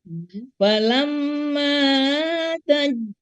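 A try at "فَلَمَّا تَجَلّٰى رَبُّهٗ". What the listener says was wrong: kurang sedikit Bunda. Falamma ini gunnah musyaddadah ya. Jadi sempurnanya 3 harokat. Ya, 2 sampai 3 tapi lebih bagus ya sempurnakan saja 3 harokat. Falamma ya.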